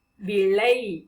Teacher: கீழ்கோட்டு லா உச்சரிக்கும் பொழுது நம்முடைய நாவானது நடுப்பகுதியை, அன்னத்தின் நடுப்பகுதியை தொடும்